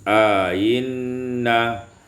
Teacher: menambahkan alif pada hamzah yang pertama sehingga panjang menjadi ainna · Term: tashil hamzati tsaniyah ma'al idkhal